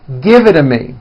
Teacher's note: when T's fall between 2 vowels, they become voiced and are pronounced as D's.